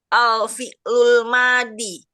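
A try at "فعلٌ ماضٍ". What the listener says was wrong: Nggak pakai alif lam. Fi'lu madin. kalau nggak ada alif lam jangan dibaca pi, jangan ditambahin Bu.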